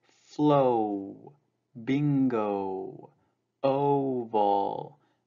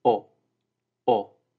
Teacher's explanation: now in navajo it only consists of one sound the beginning sound of the diphthong in english